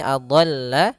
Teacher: donnya ditebalkan karena sifat huruf dol adalah isti'la kemudian idbaq